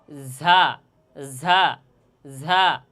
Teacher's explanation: জিহ্বার আগা, সামনের নিচের দুই দাঁতের আগা এবং সামান্য মধ্যখানে লাগিয়ে ঝা হরফটি উচ্চারণ হবে। এই নিচের দুই দাঁতকে সানে সুফলা বলা হয়।